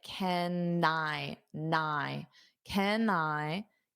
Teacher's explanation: hold out that N to go to the I